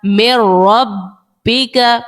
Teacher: ادغام کا قاعدہ لگا دیا، لیکن یہاں پر غنہ نہیں کیا کیونکہ را پہ غنہ نہیں کرتے